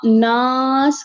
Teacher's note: آپ کی آواز اوپر کی طرف جا رہی ہے ناک کی طرف اس کو آپ نے منہ سے نکالنا ہے